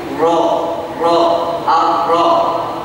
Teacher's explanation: Dan yang keempat adalah at-takrir atau tikrar, pengucapan disertai bergetarnya ujung lidah. Dan ini hanya ujung lidahnya saja yang tadi saya sampaikan di awal ketika kita praktek huruf ra, ujung lidahnya saja yang bergetar, tidak semua lidah bergetar.